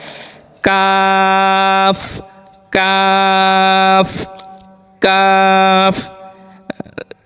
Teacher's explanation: জিহ্বার গোড়া থেকে একটু আগে বাড়িয়ে তার বরাবর উপরে তালুর সঙ্গে লাগিয়ে একটি হরফ উচ্চারিত হয়